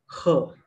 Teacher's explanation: the glottal sound, which is simply the rough breath, h.